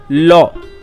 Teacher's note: জিহ্বা উপরে তালুকে স্পর্শ করে এবং দুপাশ দিয়ে বাতাস বেরিয়ে যায়, তাই লকে পার্শ্বিক ধ্বনি বলে।